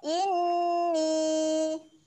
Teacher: kita dengung dahulu kemudian kita panjangkan bunyi ni tu sebanyak empat harokat